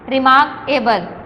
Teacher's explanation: مارک جب ہم بولتے ہیں تو ہم تھوڑا سا سٹریس دے کے اونچا کر کے بولتے ہیں